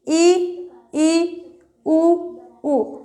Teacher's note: जिन स्वरों का उच्चारण करते समय मुख कम खुलता है उनको बोलेंगे हम संवृत स्वर।